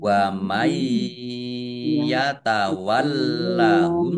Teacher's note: nun sukun bertemu dengan huruf Ya, bacaan idgham bighunah masuk dengan mendengung